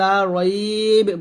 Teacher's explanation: এখানে যদি আমরা ওয়াকফ ধরি তাহলে লা রয়ব বলতে হবে, এই বাটা সাকিন হয়ে যাবে, যেখানে সাকিন দিচ্ছে মানে হচ্ছে ওয়াকফ ধরলে বাটা সাকিন হবে, আর ওয়াকফ না ধরলে আমরা মিলাই পড়লো, বা জবর বাই পড়বো।